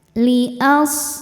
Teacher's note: shadnya berdesis karena shad namanya shofir artinya ada desisan seperti suara angsa